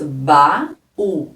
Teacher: tanto o a é forte e marcado na sílaba como o u também o u sozinho forma uma sílaba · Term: iato